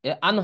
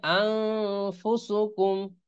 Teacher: যেমন কিরকম পড়তে হয়, আলিফ নুন জবর আং, এরকম হবে। আন হবে না, আন পড়া যাবে না, এটাকে পড়তে হবে আং। আলিফ নুন জবর আং, ফা পেশ ফু, তাহলে আং ফুসুকুম, হ্যাঁ এরকম হবে। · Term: ইকফা গুন্না